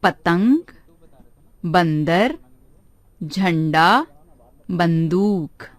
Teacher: इसका उच्चारण नाक से किया जाता है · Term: अनुस्वार